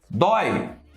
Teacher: Começa com o som da vogal e cai para a semivogal. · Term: ditongo decrescente